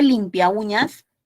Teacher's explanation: entre la a y la u hay un hiato acentual